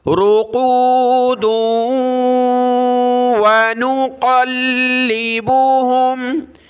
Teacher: अयक़ाज़न वहुम रुक़ूदुन वनुक़ल्लिबुहुम, रा पेश रू, क़ाफ वाव पेश क़ू, रुक़ू, दाल को वाव के साथ मिलाना है, यहाँ रुकना नहीं है